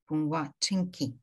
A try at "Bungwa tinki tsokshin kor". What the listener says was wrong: So in the entire line, you should not pause at a particular sound. So bungwa tinki. So tinki should come together. Bungwa tinki tsokshin kor.